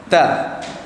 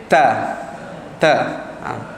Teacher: Hujung lidah letak di gusi atas. Gusi atas. 2 gigi bawah atas sikit pada gigi kepak kita. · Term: huruf ta